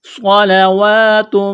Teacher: صاد کو موٹا کرنا ہے، سیٹی کی آواز پیدا کرنی ہے ، واو کے اوپر کڑا زبر ہے، ایک الف کے برابر